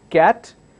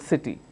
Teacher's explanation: One starts with the k sound, cat, the other one starts with a s sound, city. We don't say sat and kitty.